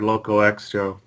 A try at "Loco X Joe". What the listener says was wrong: I think it's just Loco Joe. You don't pronounce the X in that case.